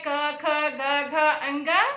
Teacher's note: अ है, कवर्ग है, ह है, तो अकुह विसर्जनीयानां कंठः। कंठ से अ का उच्चारण होता है, कवर्ग का उच्चारण होता है क ख ग घ अंग, और ह वर्ण का उच्चारण होता है।